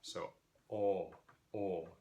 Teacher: So then in the back we have oo, o, and ah, and then this vowel is written in Old Norse as o with a tail, o caudata. The International Phonetic Alphabet equivalent of that is open O, which looks like a backwards C, and that is just a rounded ah.